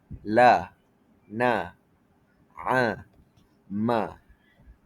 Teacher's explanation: Yang kedua, tawasut. Suara keluar pertengahan. Tak terlalu tertahan dan tak terlalu mengalir.